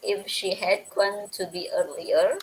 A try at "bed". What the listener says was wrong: The first time you didn't pronounce the bad correctly. I couldn't hear bad sound.